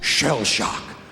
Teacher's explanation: When he gets to shell shock, his voice lowers. He adds emotion, making a fist on shell before driving forward with shock, as if replicating a weapon or piece of artillery.